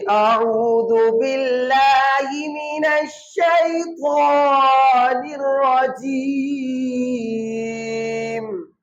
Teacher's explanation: تو یہاں پہ ہم نے پھر 3 الف کے برابر کھینچنا ہے، کیونکہ آگے وقف کی علامت ہے۔